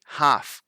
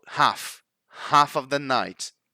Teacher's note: We don't actually pronounce that L.